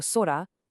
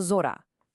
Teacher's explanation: Can you hear it? The s in sa voices up into a z sound. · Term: renaku